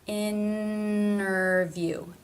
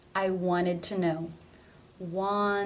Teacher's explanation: There's no stop, there's no T, there's no D. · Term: leave out a T sound